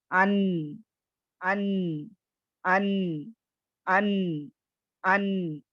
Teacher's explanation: बिल्कुल साँस जारी नहीं हो रही है। आवाज़ में क्या हो रही है? क़ुव्वत आ रही है। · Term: जहर